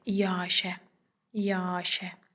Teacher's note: iki qoşa saitin ortasına bir dənə y samiti əlavə olunur. Biz də buna səs artımı deyirik.